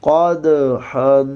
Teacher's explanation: قاف کو موٹا کریں گے، دال کو قلقلہ کریں گے، ہا میں سانس کی آواز آئے گی۔